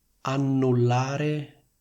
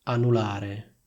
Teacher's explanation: la N singola viene pronunciata molto più rapidamente ed è meno forte